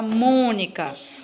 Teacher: a palavra mônica, onde a sílaba pronunciada com mais intensidade é a antepenúltima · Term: proparoxítona